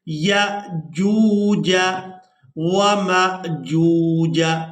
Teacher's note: جیم کو واو مدہ کے ساتھ ملاتے ہوئے کھینچ کر ادا کریں گے · اب یہاں پر بھی ہم نے میم کو حمزہ ساکن کے ساتھ ملانا ہے تو جھٹکے کے ساتھ ادا کرنا ہے